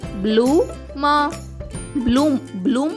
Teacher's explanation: బి L యొక్క శబ్దం బ ల కాకుండా బ్ల అవుతుంది